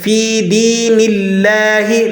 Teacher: لفظ اللہ کو باریک پڑھیں گے، اس سے پہلے والے حرف نون پر زیر ہے